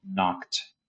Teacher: In this case, knock is regular, so you add the ED, and you're left with knocked as the T sound at the end